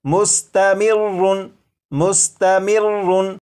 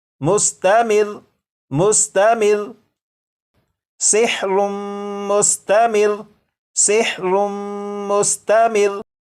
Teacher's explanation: लेकिन जब वक्फ में पढ़ेंगे तो ये जो लफ्ज़ है इस लफ्ज़ के रा के ऊपर जो तशदीद है इसे तो पढ़ेंगे, लेकिन रा के ऊपर जो 2 पेश हैं इन्हें ख़त्म कर देंगे। और ये जो लफ्ज़ है मुस्तमिर्रुन, वक्फ में ये पढ़ा जाएगा मुस्तमिर मुस्तमिर सिहरुम मुस्तमिर सिहरुम मुस्तमिर।